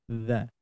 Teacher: ujung lidah nempel ke gigi seri atas